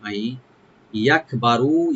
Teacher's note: আই এখানে নুন সাকিন এর সাথে মিশবে, একদম গুণা হবে